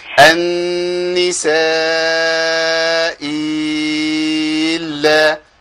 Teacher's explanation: الابدال الهمزه الثانيه بياء مع المد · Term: وجه الابدال